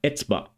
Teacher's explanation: The consonant ayn became silent, or pronounced as a glottal stop.